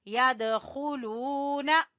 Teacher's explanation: دال کے اوپر قلقلہ کریں گے